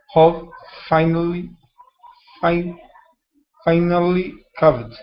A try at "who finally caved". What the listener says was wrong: So instead of how, this is who.